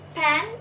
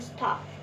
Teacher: Pen is aspirated, stop is unaspirated.